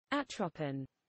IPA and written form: ˈætrəpɪn (atropin)